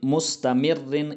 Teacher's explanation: مستمرن، یہاں پر جو یہ را مشدد جو ہے، یہاں پر یہ جو مستمرن ہے اس کو بھی باریک پڑھا جائے گا کیونکہ یہاں پر را مشدد پر 2 زیر آئی ہے تو اسی وجہ سے اس کو باریک پڑھا جائے گا